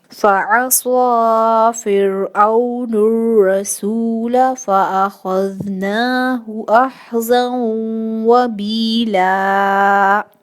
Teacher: خا ایک heavy letter ہے، اس کو پر پڑھیں گے، دال کو نرمی سے ادا کریں گے، نون کے اوپر کھڑی زبر ہے، 2 حرکت کھینچ کے پڑھیں گے، ہا کی حرکت کو نہیں کھینچیں گے.